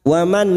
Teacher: Wa man nun sukun bertemu hamzah idhar halki. Nun sukun dibaca jelas tanpa mendengung.